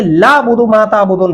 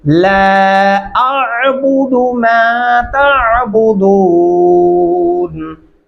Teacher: ला दो अल्फी मद्दा है, अलिफ और आइन की आवाज डिफरेंट महसूस होनी चाहिए